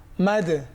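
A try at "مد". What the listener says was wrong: সাবাস।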